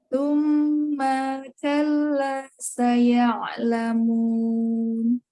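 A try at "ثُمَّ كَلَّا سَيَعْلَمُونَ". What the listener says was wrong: Ya, gunnahnya ditahan lagi Umi. Tsumma kalla.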